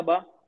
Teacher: बा दोनों होठ के सख्ती से होते हैं।